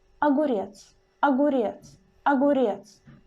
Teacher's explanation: the vowel O in the very beginning of the word. And it will be changed to the A. But it will be pronounced also very clearly and just a little bit shorter than stressed vowel. It will be pronounced like огурец, огурец, огурец.